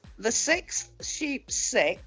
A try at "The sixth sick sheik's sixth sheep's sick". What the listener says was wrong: No, there's a sick before the sheep. The sixth sick. The sixth sick sheep's sixth sheep's sick.